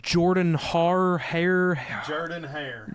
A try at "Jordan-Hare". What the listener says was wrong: Put the emphasis on the wrong syllable. Just like John in the Jordan.